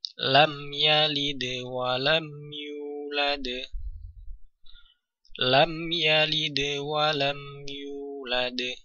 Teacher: syafawi sendiri artinya adalah bibir untuk menunjukkan bahwa mim sukun ee keluar atau makhrajnya adalah bibir · mim sukun dibaca dengan jelas ya tanpa dileburkan atau didengungkan ya jadi mim sukun dibaca dengan sesuai dengan apa adanya mim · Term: Izhar Syafawi, idhar syafawi